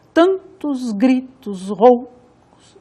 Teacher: Tan tônico, tos átono, gri tônico, tos átono, rou tônico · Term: ritmo métrico